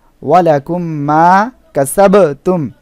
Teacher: উক্ত মিমকে মিম সাকিনে এর পরবর্তী মিমের সাথে গুন্নাহ সহকারে মিলিয়ে পড়তে হয় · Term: ইদগামে শাফাবি